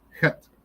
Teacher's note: Het is a CH, but it's a CH that's swallowed in the back of your throat